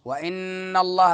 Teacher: لفظ اللہ کو پر پڑھیں گے اور نون مشدد ہے تو غنہ زمانی،